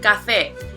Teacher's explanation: as we can see it has two syllables which are ga we can also see that the stress falls on the second syllable